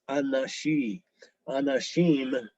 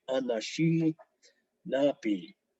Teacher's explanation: if it's if it's uh not possessed but if it's possess that final M drops off